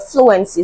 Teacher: Option D is the final answer to this question because fluency is stressed at the beginning of the word. The first syllable is stressed in the word fluency.